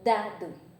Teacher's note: A ponta da língua encosta lá na parte de trás dos dentes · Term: apicodental